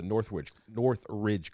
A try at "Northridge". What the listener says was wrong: It's pronounced Northraj. All right, it's Northraj. Yeah, Northraj. It's not a hard R.